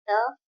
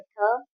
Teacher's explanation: त वर्ग में अघोष अल्प प्राण है त, अघोष महाप्राण है थ